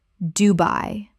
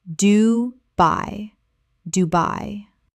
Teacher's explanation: 2 syllables with the stress clearly on the second.